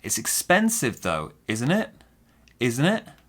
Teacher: i noticed my intonation i'm going down up